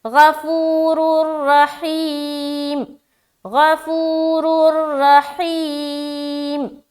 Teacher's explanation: تو واللہ غفور الرحیم، یہ صحیح ہے، غفور الرحیم، غفور الرحیم، ٹھیک ہے۔ تو را کو موٹا بھی رکھنا ہے، دونوں را موٹا ہوگا، اس میں دو پیش کی تنوین ہے، اس میں را مشددہ کے اوپر زبر ہے، تو دونوں را کو موٹا رکھیں گے۔